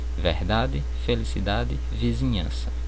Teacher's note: vocês percebam que eu não pronuncio a letra D no final da palavra ela praticamente é muda